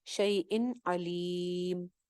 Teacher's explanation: اظہار ہو جائے گا، نون کو ظاہر کر دیں گے جو شیء کی تنوین میں چھپا ہوا ہے. شیء علیم، علیم کے اوپر آپ مد عارض لگا لیں گے.